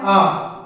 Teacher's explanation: विवृत सिर्फ एक है और वो है बड़ा आ। क्योंकि जब बड़ा आ बोलेंगे तो आ तेजी से बोलेंगे जिससे हमारा मुंह पूरा खुल जाएगा। तो पूरा मुंह खुल रहा है तो विवृत।